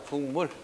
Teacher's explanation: 기역이 비음을 봐서 이응 됐으니까 교체됐지. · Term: 역행동화